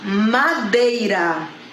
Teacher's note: Então, nós temos o E, que é uma vogal, e o I, que é uma semivogal, tá? Então, iniciei com vogal e fui para semivogal. Então, a gente vai chamar de decrescente. O som forte para o som fraco.